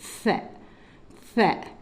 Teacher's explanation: நுனி நாக்கை வெளியில் வச்சு மேல் புள்ளியை தொட்டு வெளியில் வரும்